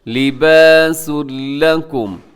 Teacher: تنوین کے بعد لکم کے شروع میں لام ہے، تو ادغام ہے لیکن بغیر غنے کے ادغام ہے